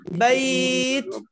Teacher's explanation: জি তাতে একটু হামস করতে হবে, মানে বাতাস বের করতে হবে। বাইত। জি আমার হামসটা বুঝেছেন, মানে একটু বাতাস বের করতে হবে তাতে। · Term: হামসের হরফ